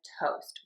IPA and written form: toʊst (TOAST)